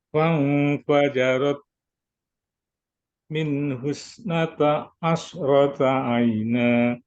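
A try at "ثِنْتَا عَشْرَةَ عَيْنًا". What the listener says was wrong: Nata dua harokat. Ta itu dua harokat. Kita bisa memahami yang tadinya pendek, yang tadinya panjang dibaca pendek.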